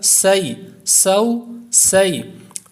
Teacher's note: سین واو زبر سو. سین بھی حروف صفیریہ میں سے ہے، یعنی جن کو ادا کرتے وقت سیٹی کی آواز پیدا ہوتی ہے، اس لیے اس میں بھی سیٹی کی آواز پیدا ہوگی.